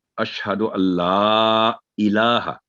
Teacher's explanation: नून साकिन के बाद जब लाम आ जाए या रा आ जाए, इसके ऊपर तशदीद हो, तो फिर ये गुन्ना नहीं होता, नून टोटली साइलेंट हो जाएगी।